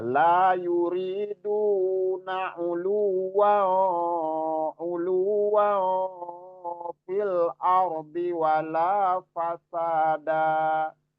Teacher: Di sini ulu kalau disambung dengan fa itu terjadi ikhfa di situ. Jadi samar suaranya samar. dan ditahan.